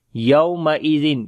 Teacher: After the tanween there is ya, we make idgham with gunna.